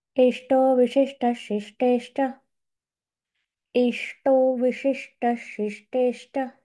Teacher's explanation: ट मध्ये पण जीभ मागे जाते टाळू त्या ठिकाणी लागते